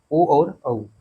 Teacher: ओ और औ ये क्या होती हैं? कंठ ओष्ठ ध्वनियां होती हैं।